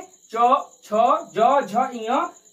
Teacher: इन वर्णों का उच्चारण हम तालु से करते हैं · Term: तालव्य वर्ण